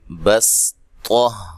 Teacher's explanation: خالص سین پڑھی جائے گی، صاد کو نہیں پڑھیں گے